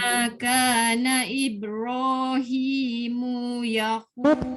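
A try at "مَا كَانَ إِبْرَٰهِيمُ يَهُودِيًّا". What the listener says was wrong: Mu tak boleh panjang. Mu tak boleh. Ma kana Ibrahimu Yahu. Jangan mu tak boleh.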